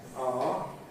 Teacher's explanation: I didn’t say aʊə, because we don’t normally say aʊə. We say ɑː